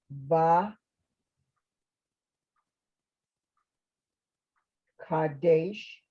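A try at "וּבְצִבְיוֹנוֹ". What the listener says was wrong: Don't forget the little yeah in the middle. Va, yeah, Kadesh.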